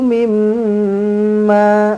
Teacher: mim sabdu wajibul gunnah, dengungkan dua harakat. Kemudian ma mad asli dua harakat.